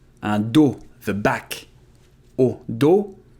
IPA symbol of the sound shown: o